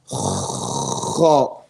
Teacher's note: Okay? Which is the makhraj of the letter Kha is adna al-halq, from the top of the throat. Now, the letter Kha, it's the last letter of the throat.